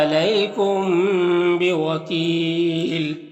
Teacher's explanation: میم ساکن کے بعد با ہے تو یہاں پر اخفاء شفوی ہوگا، غنہ اور اخفاء کے ساتھ میں پڑھیں گے۔ یہاں پر وقف کریں گے تو دو زیر کی تنوین سکون سے بدل جائے گا، تو پھر یہاں پر مد عارض وقفی ہوگا، تو اس طرح سے پڑھیں گے۔